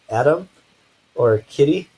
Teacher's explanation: we do have this other sound in English called a flap this flap is kind of like the letter D sound or the letter T sound but it's just said really quickly the tongue very very briefly will brush the top of the mouth